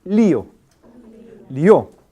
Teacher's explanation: la duración de ambas vocales son más o menos iguales